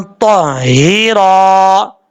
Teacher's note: तो ज़बर हा, ता, हा ज़ेर ही, ताही, रा ज़बर अलिफ रा, ताहीरा, इस तरीके से पढ़ना है। ताहीरा, ता हुरूफ मुस्तालिया में से पुर पढ़ा जाएगा।